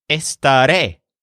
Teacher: This word is pronounced with a stress on the last syllable, which sounds like ray.